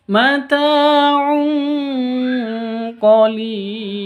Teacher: Tanwinnya ditambah dengan ng karena bertemu dengan qaf. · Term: ikhfa hakiki